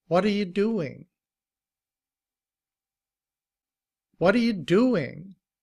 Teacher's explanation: notice that the t is often pronounced like a d also. It's a it's a soft t.